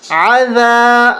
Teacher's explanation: ذال پہ زبان کو باہر نکالیں گے